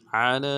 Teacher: عین کو موٹا ادا کریں گے، لام کے اوپر کھڑا زبر ہے، مد عارض ہے، ڈائل کھینچیں گے۔